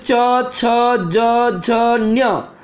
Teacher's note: ये तालु से उच्चारित होते हैं, तालु, तालु को टच हुए निकलते हैं वर्ण